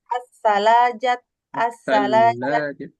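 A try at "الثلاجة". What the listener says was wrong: Sallajatu. La-nya ada tasdidnya. As-sallajatu. Tas.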